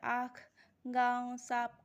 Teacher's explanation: हमारा अनुनासिक होता है मुंह और नाक दोनों के द्वारा बोला जाता है।